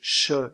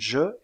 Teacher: il y a un resserrement du passage de l'air au niveau du Palais avant avec la pointe de la langue en haut et les lèvres arrondies aussi appelle--on ces deux constructives des constructives prépalatales la consonne Che · la consonne Che est sourde et la consonne je est sonore